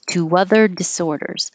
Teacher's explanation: put a little invisible W because you have to round your lips